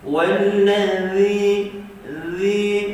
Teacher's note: Huruf dzal hujung lidah sentuh hujung gigi atas